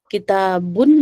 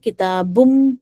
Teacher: جو نون ساکن کی جو ہمارا آواز ہے اس کو ہم مرج کر دیں گے نیکسٹ لیٹر میں، ٹھیک ہے، نون ساکن ہٹ جائے گا وہاں سے۔ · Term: ادغام وتھ غنہ